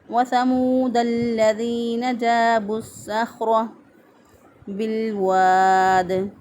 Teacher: را کے بر زبر ہے، را کو پر پڑھیں گے، موٹا پڑھیں گے